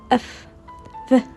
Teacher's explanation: Labiodental formed with upper teeth and lower lips